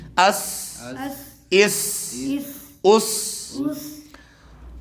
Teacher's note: سین ساکن سے متحرک حرف حمزہ کے ساتھ ملا کے پڑھ رہے ہیں تو اس کو واضح طور پہ باریک سیٹی کے ساتھ پڑھیں گے